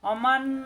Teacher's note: এই নুনের তাজদিদ দ্বারা গুণাকারে মিলাতে হবে ইদগামে বাগুন্না। আর এখানে সাকিন তাজদিদ পাশাপাশি আসায় এই সাকিনালা নুন পড়া যাবে না, এই মা মিলবে এই নুনের সাথে, এরপর গুণা হবে অমান।